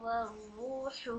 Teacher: वाव साकिन से पहले दम्मा है, तो इसको हम 2 काउंट्स देकर पढ़ेंगे। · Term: वाव मद